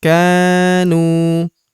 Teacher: huruf nu kita panjangkan dua harakat karena terdapat wau sukun di depannya. Alifnya tidak dibaca atau dianggap tidak ada. · Huruf ka kita panjangkan dua harakat karena terdapat tanda alif di depannya